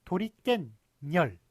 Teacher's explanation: 깬 니은 붙고요. 열 니은 붙습니다. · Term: 니은이 덧나는